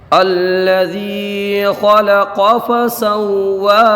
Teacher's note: یہاں پر خا کو پر پڑھیں گے، خا مستعلیہ میں سے ہے۔ قاف کو بھی پر پڑھیں گے، قاف بھی مستعلیہ سے ہے۔